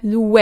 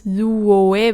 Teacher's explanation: But in colloquial speech, if you have oe after a word that ends with u, like lu, then it becomes we.